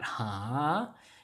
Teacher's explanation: be a rising intonation that's going up with that ha ha you have to have that rising intonation to make it sound like it's gonna be okay or alright